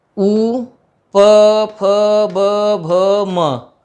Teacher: इन ध्वनियों के उच्चारण में ओष्ठ की अहम भूमिका होती है।